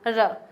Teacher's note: हमारी जो जीभ है वो थोड़ी सी कंपन करी है। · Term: लुंठित